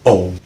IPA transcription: oʊ